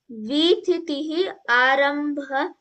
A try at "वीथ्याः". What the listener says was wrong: वीथि, ई निष्कास्य यः।